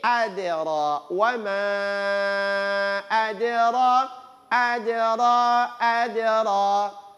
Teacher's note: huruf da ini kalau dia sukun maka berlaku pantulan. Ketika dia dipantulkan huruf da, tidak boleh condongnya ke o. Condongnya ke e.